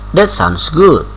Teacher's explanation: you should say that sounds good with rising intonation